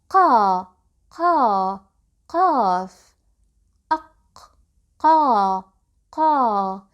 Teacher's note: This letter's sound comes out when the deepest part of the tongue touches the very back of the soft palate here. قا قا قاف.